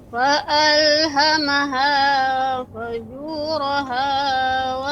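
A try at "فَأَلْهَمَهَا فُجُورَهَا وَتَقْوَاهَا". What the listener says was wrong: Ya, fu. Tadi kurang ya, dimantapkan lagi pengucapan dhammannya. Fu dengan dimonyongkan. Fa'alhamaha fujuraha wa taqwaha.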